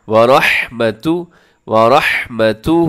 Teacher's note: را کے اوپر زبر ہے تو اپنے را موٹی پڑھنی ہے، ہا کا خیال رکھنا ہے.